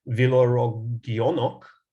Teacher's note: you occasionally get a word where you do get a palatal velar before a back vowel